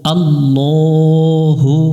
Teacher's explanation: আল্লাহ শব্দের ডান পাশে যদি জবর আর পেশ থাকে তাহলে লামটা কে মোটা করে পড়তে হয়